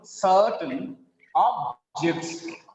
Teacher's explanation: it's a noun here. The first syllable is stressed.